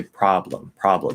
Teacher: it sounds like the b and the l are together